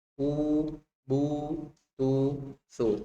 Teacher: Seperti di dalam kata u, nu, bu, bu, ujung lidah terangkat ya saat melafalkan huruf waw